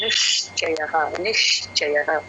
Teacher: first ఒక నిష్ sound వచ్చిన తర్వాత చ పలకాలి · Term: ష కి చ వత్తండి